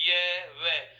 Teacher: ये और वे, इन दोनों के दोनों अंतस्थ वर्णों का उच्चारण स्वरों की तरह हो रहा है। स्वरों में भी तो जीभ को किसी प्रकार की कोई क्रिया करने की आवश्यकता नहीं है। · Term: अर्ध स्वर